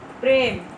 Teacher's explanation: তৎসম শব্দের প্রথমে ব্যঞ্জন ধ্বনির সাথে যুক্ত এ ধ্বনির উচ্চারণ কি হয়েছে? সংবৃত হয়ে গেছে